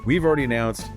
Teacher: that reduction of have to just a soft v sound that blends into the next word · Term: reduced form of we have